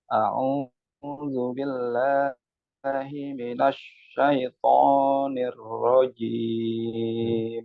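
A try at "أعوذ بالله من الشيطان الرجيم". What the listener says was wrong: Pakai shin, Pak, bukan pakai sin. Minasya. bukan minasa. Minasyaitonirrajim.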